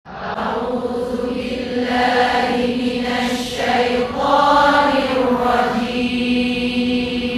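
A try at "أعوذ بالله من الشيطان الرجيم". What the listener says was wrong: Dekat bahagian syaddah ibu-ibu tekankan sedikit.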